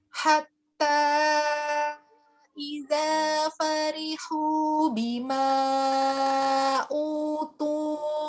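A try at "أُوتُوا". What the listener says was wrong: Ayo, tu-nya itu masih kurang hamesnya.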